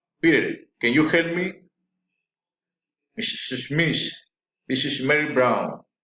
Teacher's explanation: Direct address, rising intonation.